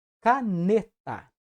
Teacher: E é na vogal tônica que recai a acentuação, que nesse caso é na sílaba ne.